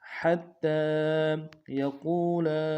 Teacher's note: قاف کو موٹا کرتے ہوئے واو کے ساتھ ملانا ہے، واو مدہ ایک انداز میں کھینچیں گے